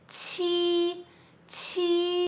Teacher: The difference between qi sound and G sound is that you have to push air more stronger.